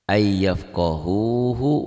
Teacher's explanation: Ayyafqahu, hu-nya dua. Yang satu panjang, yang satu pendek. Ini ada madnya, doma dengan waw sukun nih, mad ini.